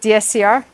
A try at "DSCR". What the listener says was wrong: Yeah, you said DCSR. DSCR.